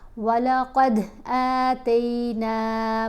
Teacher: تا کے اوپر زبر ہو تو تا آواز بنتی ہے نا، لیکن یہاں یا ساکن کی وجہ سے تا زبر یا تی آواز بنے گی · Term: حرف لین